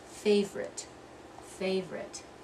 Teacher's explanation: you're not going to say three syllables you're only gonna say two syllables and we're gonna drop that middle one